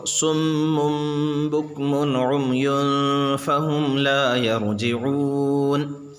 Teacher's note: صاد حروف مستعلیہ میں سے اس لیے پر پڑھا جائے گا